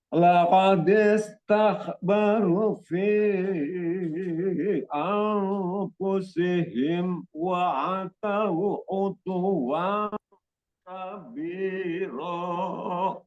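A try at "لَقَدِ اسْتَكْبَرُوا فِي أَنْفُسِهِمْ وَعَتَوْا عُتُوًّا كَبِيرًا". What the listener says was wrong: Di barunya itu kurang sedikit Pak, itu ada matobi'i ya. Laqad istakbaru fi anfusihim wa atau utuwan kabiro.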